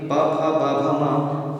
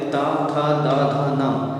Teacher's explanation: जैसे ता जो है ता था दा धा ना, इनके उच्चारण स्थान दंतीय हैं, इसलिए दंतीय उच्चारण होने से संश्रितम अगर तम कहेंगे पा फा बा भा मा, इसका उच्चारण स्थान ओष्ठ है और ता था दा धा ना का उच्चारण दंतीय है। तो ओष्ठ से आने में दंतीय के लिए जो अंतराल लग रहा है उससे लय बिगड़ने की संभावना होती है, इसलिए पहले से ही उस स्थान पर पहुंचा दिया जाता है।